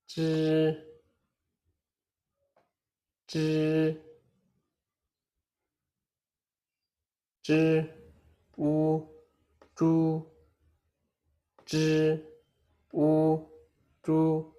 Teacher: Zhi is a retroflex sound. Your tongue should curl slightly backward. The tip of the tongue touches the hard palate. The roof of your mouth slightly behind the teeth.